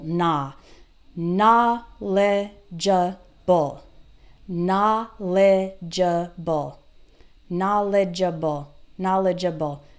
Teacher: so for knowledgeable we have na lei jaw bowl okay and the stress is on the first syllable